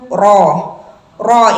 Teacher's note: makhrajnya berada di ujung lidah sedikit mengambil punggung lidah bertemu dengan langit-langit sekitar gusi dan tidak nempel rapat